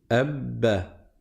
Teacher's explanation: le premier ba va fusionner dans le deuxième ba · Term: dédoublement de la consonne